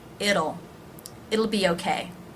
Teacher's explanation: the T is pronounced here as a flap T, the D sound